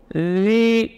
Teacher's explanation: ujung lidah di ujung gigi seri atas. Rakhawah dan jahar, jadi mengalir suara tanpa mengalir udara.